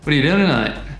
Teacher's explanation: With 'tonight', we lost the 't', so it becomes 'enight'.